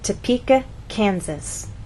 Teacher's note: we stress the middle part of the word, Topeka, and here the first part, Kansas. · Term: word stress